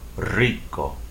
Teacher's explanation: The initial R as a consonant in Spanish would have to be rolled